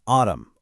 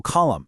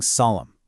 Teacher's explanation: you just stop right at that M sound. That N is completely silent.